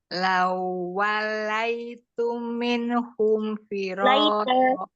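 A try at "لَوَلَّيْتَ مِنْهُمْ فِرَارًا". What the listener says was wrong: Umi sambil lihat perhatikan hurufnya, harokatnya yang perhatikan ya. Lawallaita itu ya bukan lawalaitu. Lawallaita minhum firara.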